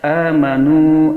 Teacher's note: hurufnya pada kedua bibir yang disentuhkan